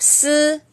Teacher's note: chúng ta thẳng lưỡi ra và cái hơi nó sẽ đẩy ra từ đầu lưỡi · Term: đẩy nhẹ